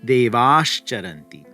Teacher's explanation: that visarga now has to turn into the palatal sibilant, the shakara. So it becomes devash charanti.